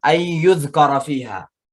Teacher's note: nun mati ketemu ya, namanya idgham, ya, juga idgham bi gunnah.